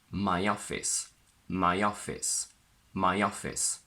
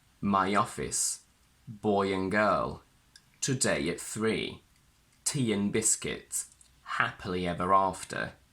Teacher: I added a little bit of a y between my and office, so it's much easier for my mouth to connect these two sounds together. The intrusive sound y connects a word ending in I and e, and another one starting with a vowel.